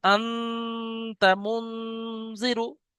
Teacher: তানবিন বা নুন সাকিনের আওয়াজকে নাকে তুলে এক আলিফ পরিমাণ গুন্না করে পড়তে হবে